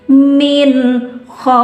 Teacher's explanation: fathah menghadapi waw mati berada di ujung ayat, maka sama namanya madlin, panjang dan lembut dibaca min khauf. Ya, nggak apa-apa bibirnya moncong ke depan, emang harusnya seperti itu, nggak bisa baca min khauf bibirnya ditahan, nggak bisa.